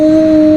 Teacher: یہاں پہ نون ساکن کے بعد کاف حروف اخفا میں سے آیا ہوا ہے تو یہاں بھی ہم نے اخفا کیا، یعنی کہ نون کو چھپا کے پڑھا